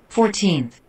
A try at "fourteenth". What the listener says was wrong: Remember, que al final, como en una TH, suena como F, ¿oíste? Fourteenth. Cierra así los dientecitos, como si fuera conejo. Fourteenth. Suena así, una F al final.